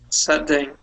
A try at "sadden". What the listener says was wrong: your tongue is hitting the top of your mouth at the end of the word